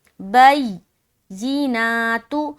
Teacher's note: یا میں تشدید میں نا ایک قسم کی سختی پائی جاتی ہے. جب بھی کسی حرف کے اوپر تشدید آئے گا تو اس کو سختی سے تھوڑا ادا کریں گے اور یا پر جب شد آ جائے تو زیادہ سختی بنے گی.